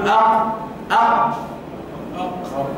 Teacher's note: اللسان مع حنك اللحمي يخرج حرفه القاف